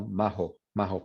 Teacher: Pero en Andalucía es más como majo, majo, como la H en inglés.